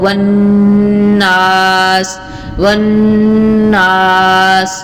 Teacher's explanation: جو غنہ ہوتا ہے وہ ظاہر ہوتا ہے، جیسے مثال کے طور پہ کہیں غنہ کرنا ہو والناس، والناس، تو دیکھیں ادھر غنہ ہو رہا ہے تو غنے کا ناک کے اندر جو آواز ہے نون کی وہ ٹھہرا کے آ رہی ہے